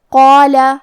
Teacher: کلمت قال یہاں حرف القاف ہے اور اس کے بعد مد الف ہے، تو ہم قاف کو اور مد الف کو دونوں کو موٹی آواز میں پڑھیں گے